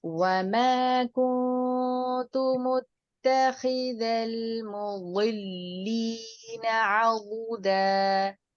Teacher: बहुत की अदायगी में एक चीज को जहन में रखिएगा, एक तो इसको हम जमाओं के साथ अदा करते हैं, पुर हुरूफ में से है, और आपकी जुबान की करवट जो है वो ऊपर के जो दाढ़े हैं उनके साथ लेफ्ट साइड पर जो दाढ़े हैं उनको टच करेगी, और अमूमन लेफ्ट साइड को करती है, वरना दोनों साइडों को भी कर सकती हैं।